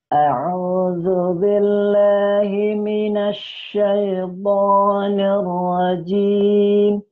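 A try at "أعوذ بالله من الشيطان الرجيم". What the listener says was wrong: Benarkah itu keluar lidahmu? Syaitan mana? Coba nanti diperhatikan lagi, kalau enggak salah itu lidahnya masih keluar dari gigi itu ya. Syaitanir rajim. Bunyinya coba lidahnya nanti di dalamin aja ya.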